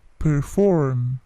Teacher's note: P-nya plosif tetapi tidak terlalu besar plosifnya